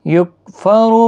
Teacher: یکفر را پیش کی وجہ سے پر پڑھا جائے گا۔ بہا ہا الف مدہ ہے، ایک الف کی مقدار کے برابر کھینچ کر پڑھیں گے۔